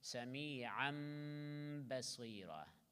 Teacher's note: Idgham of tanween, you will see a small mim there, so you can recite mim completely, or you can recite in between mim and noon